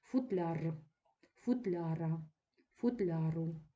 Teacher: постійно наголошений суфікс яр